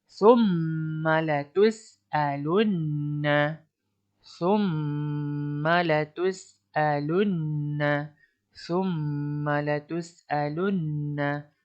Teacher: ini adalah mim yang bertanda syaddah. Okey, perlu dibaca dengung dengan dua harakat